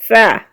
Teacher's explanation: زبان کا سرا سامنے کے اوپر والے دو دانتوں کی جڑ سے مل کر ثا ادا ہوتا ہے